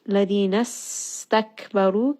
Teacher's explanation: Ladina stakbaru, kaf is going to have hams. Ra is going to be heavy because of the dhamma.